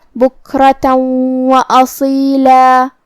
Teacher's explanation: واو حروف الادغام بغنہ میں سے ہے اور ادغام کا معنی ہے حرف کو حرف میں داخل کرنا، تو ہم یہ تنوین کو واو میں ملا کے غنہ اور تشدید کے ساتھ یہ حکم کو ادا کریں گے